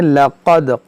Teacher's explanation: क़ाफ मोटा करें, दाल में कलकला करें